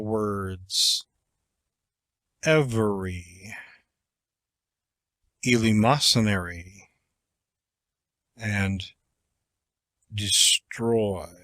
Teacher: the sentence one of the chief means of securing emphasis is to employ a long falling inflection on the emphatic words that is to let the voice fall to a lower pitch